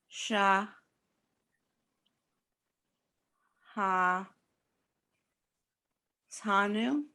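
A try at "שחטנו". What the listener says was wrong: Look at the vowel under shin. It's one dot. She hot.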